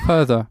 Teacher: vous prononcez aucun R, donc ça fait further.